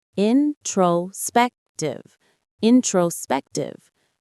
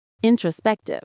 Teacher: The main stress is on the 3rd syllable, spec.